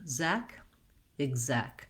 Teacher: the zek syllable with the red tent vowel is your stressed syllable